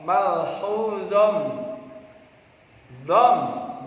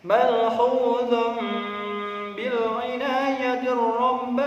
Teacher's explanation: bertemu ba malhuzom ada tanwin bertemu ba Ini bacaan iqlab iklab membacanya harus berdengung mengganti suaranya nun mati atau tanwin dengan huruf Mim